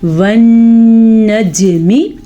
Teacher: جیم کے اوپر قلقلہ بھی ہو رہا ہے کیونکہ جیم حروف قلقلہ میں سے ہے